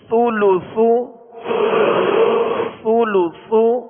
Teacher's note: سا پیش سو، سولو سو، سولو سو. اس میں سختی نہ ہو، سا کو نرمی کے ساتھ اور باریک پڑھیں گے